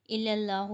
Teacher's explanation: اللہ کا نام موٹا پڑا جائے گا کیونکہ اللہ کے نام سے پہلے زبر ہے